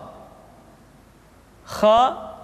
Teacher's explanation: dikeluarkan dari pangkal tenggorokan di pangkal tenggorokan diucapkan dengan mengalir nafas